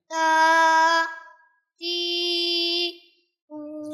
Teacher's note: زبان کی نوک اور سامنے والے دو بڑے دانتوں کی جڑ سے تا ادا ہوتا ہے